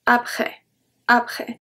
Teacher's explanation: We don't pronounce the S. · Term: silent letters